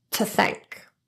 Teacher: the word to reduces to T when it's unstressed and followed by a consonant